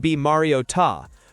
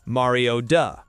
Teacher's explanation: A T ends up sounding like a D.